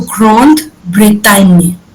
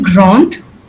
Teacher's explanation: Because जहाँ A और N आता है, जहाँ पे A और N एक साथ आ जाता है, वहाँ पे we have to say the words in a little bit nasal way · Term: Nasal sounds